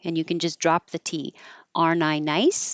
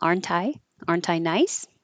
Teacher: can drop the T because it's coming after the N your tongue already goes to the N position